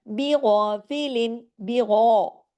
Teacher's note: اس لیے صرف غین کو ہیوی کرنا ہے، باقی تمام باریک حروف ہیں، اور غین کے ساتھ الف بھی ہے، وہ اتنا کھنچے گا 2 حرکات۔